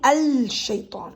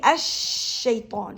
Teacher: The lam sound here, or the l sound here, is elided or swallowed by the sheen. I'm saying ash-shaytan, so I actually deleted or swallowed that lam sound because the letter that comes after la here is sheen. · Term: swallowed by the following consonant